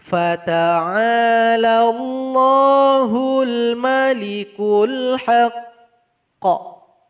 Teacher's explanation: sebelum kita pantulkan bunyi qalqalahnya kita tahan dulu selama 2 detik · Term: qalqalanya